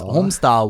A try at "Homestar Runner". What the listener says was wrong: You can't pronounce the R, man. Homestar Runner.